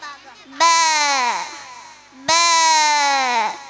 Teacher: രണ്ട് ചുണ്ടിന്റെയും നനഞ്ഞ ഭാഗം